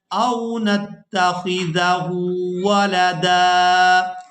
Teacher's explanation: وقف کی صورت میں ہم نے دال پر ایک زبر ادا کرنی ہے اور اس کو ایک الف مقدار کھینچ کر ادا کرنا ہے